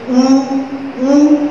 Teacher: दोनों होंठ इतने पास पास आ रहे हैं कि वायु को बाहर निकलने में थोड़ा सा संघर्ष करने की आवश्यकता हो रही है